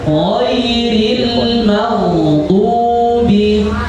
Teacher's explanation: Jadi huruf ghain dilepaskan tebal ya. · Adnal halq atau ujung tenggorokan. Dia berdekatan dengan pangkal lidah.